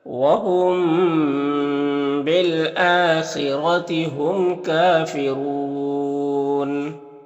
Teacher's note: یہاں پر میم ساکن کے بعد با ہے تو اخفاء شفوی ہوگا، اسے غنہ اور اخفاء کے ساتھ میں پڑھیں گے۔